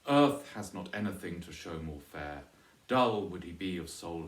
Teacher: the first two lines both have Trochaic substitution on the first foot